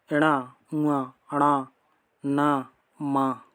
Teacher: इन सब का उच्चारण स्थान नासिका होता है। नाक से बोले जाते हैं या ये सभी नासिक व्यंजन कहलाते हैं।